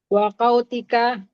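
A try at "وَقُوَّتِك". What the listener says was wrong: Bukan qaw, ingat la haula wala quwata. bukan qut. Qut makanan, tapi kalau quwwah kekuatan.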